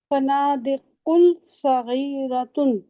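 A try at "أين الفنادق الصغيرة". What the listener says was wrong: फनादिकुस। शर्त नहीं लगा हुआ, लेकिन स्वाद जो है वो हरूफे शमसी है ना, मिलाकर पढ़ेंगे। एनुल फनादिकुस सगीरतु।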